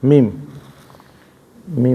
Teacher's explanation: दोनों होठों के खुश हिस्से मिलाने से अदा होते हैं। मीम मीम यह 14वा मखरज है। मीम मी है 14 मखरज